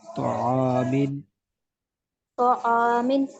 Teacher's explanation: میم پہ تنوین ہے لیکن غنہ ہم نہیں کر رہے